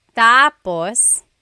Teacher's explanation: When the emphasis is on the first syllable, tapos, then it means next.